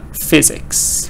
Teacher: two syllables stress on the first part